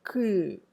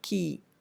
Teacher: The place of articulation becomes it's in a slightly forward position, not in the backward velar, pure velar position, but in a pre-velar position that you have, or pre-velar point that you have, the place of articulation, key.